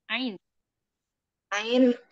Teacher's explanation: Ain, ain di tengah tenggorokan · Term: huruf Ain